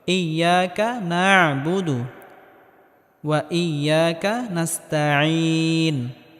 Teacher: আইনটিকে গলার মধ্যে হালকা চাপ দিয়ে উচ্চারণ করতে হবে